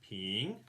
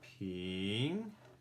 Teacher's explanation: When you say píng guó, it goes ping. So it sounds like it's going up.